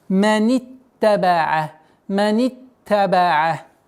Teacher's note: с огласовки фатха, кясра, уходим на удвоенный та.